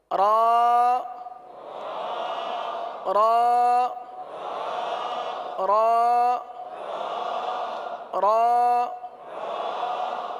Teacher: र का मखरज है जबान का किनारा और दांतों की जड़ के तालू की जानिब वाले हिस्से से अदा होते हैं। · را کے لیے زبان جو ہے یہ دانتوں کی تالو کی جانب والے حصے کی طرف مڑتی ہے اور سیدھی ہوتی ہے، اس طرف جاتی ہے اور سیدھی ہوتی ہے. · را کا مخرج ہے زبان کا کنارہ اور دانتوں کی جڑ کے تالو کی جانب والے حصے سے ادا ہوتے ہیں